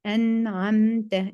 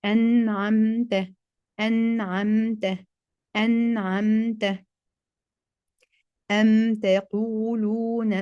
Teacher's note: C'est la prononciation claire du mime sékina depuis son point d'articulation, sans nasalisation complète. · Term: La clarification labiale